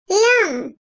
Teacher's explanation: Lam harfi dil ucunun iki kenarı ile birlikte üst damağa değmesiyle çıkarılan bu harf ince seslidir.